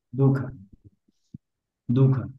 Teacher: তো এটা আমরা অনেক সময় এটা মাঝখানে থাকলে, যেহেতু পরবর্তী মানে খ অর্থাৎ আমাদের ব্যঞ্জন ধ্বনিটা আসছে, হ্যাঁ, তা আমরা এটাকে একেবারে দুহ খ বলতে পারবো না, একদম সূক্ষ্ম ভাবে একদম উচ্চারিত হয় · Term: বিসর্গ